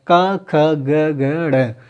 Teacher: क्योंकि जो का वर्ग है वो पूरा होता है कंठ व्यंजन, जो कंठ से बोला जाता है, का, ख, ग, घ, ड़।